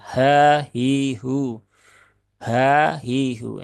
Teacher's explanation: Ha, hi, hu ya. Nah, karena ha ini dia punya sifat khofa begitu. Maka terkadang dia itu suaranya menjadi lebih samar sehingga kadang terbaca ha, ha, ha, nah, begitu.